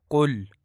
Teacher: سب سے پہلے لفظ قل کو کل پڑھا جاتا ہے جو کہ درست نہیں ہے، اور درست ادائیگی قل ہے، کاف کو موٹا کر کے ادا کرنا ہے